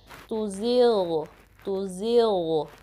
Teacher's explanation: तो इसमें प्रॉपरली आपने ग़ाइन की साउंड देनी है, तुज़िग़, तुज़िग़, ठीक है। ग़ाइन जो हमारा अदनल हल्का है, सबसे ऊपर वाला हल्का हिस्सा, upper part of the throat, वहाँ से निकलता है, ठीक है। तो उसमें आपने क्लियरली इसको अदा करना है और हैवी अंदाज में अदा करना है, ठीक है।